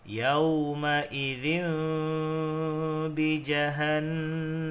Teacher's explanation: Ya, bertemu dengan huruf ba. Maka apabila ada tanwin bertemu dengan huruf ba, maka dibaca dengung seolah-olah berbunyi mim